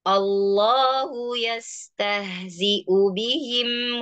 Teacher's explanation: ketika yastahzi'u bihim, ha tetap dia mengaliri, ada hamas, ada roqawah.